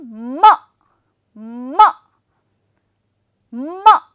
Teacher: both my lips come together to form up this sound and in that condition the flow of that air pushes from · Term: consonant sound